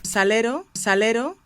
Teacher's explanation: This R is made with a flap of the tongue on the ridge behind the front teeth. That's not too far away from where the L is pronounced.